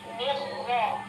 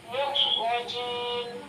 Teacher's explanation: sekarang penyebutan tasydid pada ro. Mirro. Itu agak dikasih tempo juga. Jangan lari.